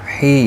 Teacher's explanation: یا مدہ ہے، ایک الف کی مقدار کے برابر کھینچ کر پڑھیں گے اور زیر کی وجہ سے باریک پڑھا جائے گا